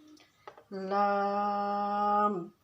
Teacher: लाम की आवाज़ को नाक में लेके नहीं जाएंगे बल्कि मुंह खोल के जैसे ला अदा होता है, ला की तरह इसको पढ़ेंगे।